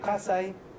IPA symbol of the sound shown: s